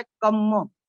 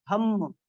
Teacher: पाली में रेफ नहीं होती, उसका लोप हो जाता है, परिवर्तित हो जाता है। जैसे हिंदी में हम बोलते हैं सूर्य, तो सूर्य पे रेफ है, तो पाली में प्राय रेफ नहीं होती, तो वो होगा सूर्यो, ठीक है। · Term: संयुक्त अक्षर